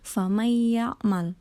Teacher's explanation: idgham bighunnah yang artinya memasukan dengan dengung